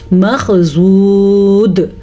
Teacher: ساکن دال تو پھر حروف قلقلہ میں سے آ جاتی ہے، تو یہاں پہ پھر جھٹکا پیدا ہوگا